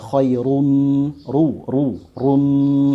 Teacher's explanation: Nah, ini juga dia hidup dan dia ya barisnya menengah ke atas ya. Dhammatain, maka dia dibaca tebal